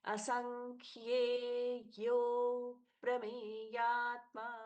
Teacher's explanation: असंख्येयः, ये यह बन गया, ये यो अप्रमेयात्मा, अ का लोप हो गया, अ हमको बोलना नहीं है। अब इससे क्या होता है, यो अच्छे से दीर्घ हो जाता है और यो पर प का सौम्य आघात भी होता है।